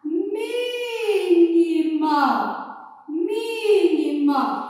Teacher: Mi é a sílaba tônica. E ela está em que posição? Na antepenúltima.